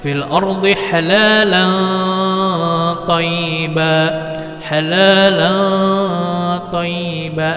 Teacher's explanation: cara membacanya adalah diengkan dan disamar-samarkan. Ya, disamar-samarkan lalu dipanjangkan selama 3 harokat. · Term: ikhfa